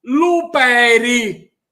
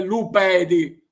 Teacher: El pie se dice lupedi, pedi. Pero en muchas partes de Sicilia y en forma muy así coloquial, la D se transforma en R. Por lo tanto, si ustedes vienen a Sicilia, pueden oír luperi en lugar de lupedi. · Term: D intervocálica en R